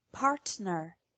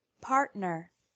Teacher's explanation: listen to the difference in the word partner pronounced incorrectly with a normal T sound and correctly with the T as a glottal stop